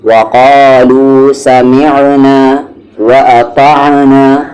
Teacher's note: عین کو بیچ والے حلق سے